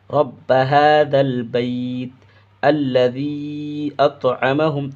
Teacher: یہاں پہ مد منفصل ہے، اس کو بھی 2-2.5 الف کے برابر کھینچ کر پڑھیں گے۔ الذی اطعمہم، بڑی تا نکالیں گے، اطعمہم، اس میم ہا کو اس میم میں ملا کر مشدد کر دیں گے، گنہ کر دیں گے، ناک میں آواز چھپا لیں گے۔